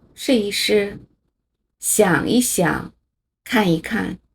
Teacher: 这里的一都要变成轻声，念得又轻又短就叫轻声